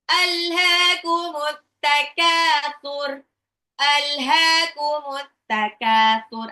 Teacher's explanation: Nah, ألهاكم التكاثر ألهاكم التكاثر الها itu alif lam komaria, haknya matabi'i dua harokat, at-takatsur alif lamnya nggak dibaca ya, alif lam samsiah ya